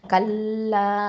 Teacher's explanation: கல்லா கல்லா, காஃப் ஃபத்ஹா, லாம் ஷத்தா, கல், லாம் ஃபத்ஹா அலிஃப் மத்து, லா 2 ஹரக்கத்தை நீட்டணும்